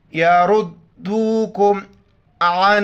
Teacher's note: کم، یردوکم، را کلرفل موٹا کر کے پڑھیں گے، یردوکم عن، نون ساکن ہے اخفا کریں گے، یہاں پر ناک میں آواز چھپائیں گے ، ساؤنڈ ان نوز، عین کو گلے سے ادا کریں گے،